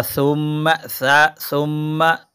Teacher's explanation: سا کی ادائیگی کرتے وقت زبان کو تھوڑا سا دونوں دانتوں کے اوپر اور نیچے کے دونوں دانتوں کے درمیان میں اس کی نوک لائیں گے تو یہ سا ادا ہو جائے گی، سیٹی کی آواز نہیں آنی چاہیے اس میں۔